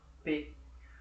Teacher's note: se eu pensar no P, PB, é bilabial. Os meus lábios estão contraídos para pronunciar esse som.